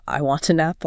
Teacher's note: the t at the end of want slides directly into the a of an. · And then the n of an slides into the a of apple creating an apple. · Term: slipstream effect